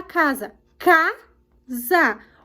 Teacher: o k é mais forte então é a sílaba tônica